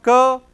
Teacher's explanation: It is voiceless velar plosive